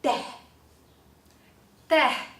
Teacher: this /ɛ/ is more relaxed so we will read it as tèh